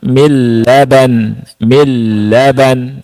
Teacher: Nun ketemu lam nunnya tidak dibaca langsung yang dibaca lam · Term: idgam bila ghunah, Idgham bila gunnah